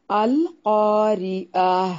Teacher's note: گول تا کو وقف کرنے کی صورت میں ہائے ساکنہ میں بدل دیا جائے گا، مطلب اسے ہا بنا دیتے ہیں۔ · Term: تائے مربوطہ